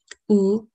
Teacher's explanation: oo which is a close rounded back vowel it occurs in initial middle and final positions the last and